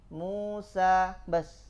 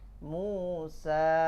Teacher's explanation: Cuman 2 harakat aja, jangan dipanjangkan lebih.